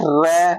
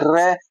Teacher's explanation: आपकी जीभ में मुंह में कंपन हो रहा है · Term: प्रकंपित व्यंजन